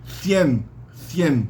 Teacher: várias palavras que tem o C mais o i na Espanha evoluem para o som fricativo interdental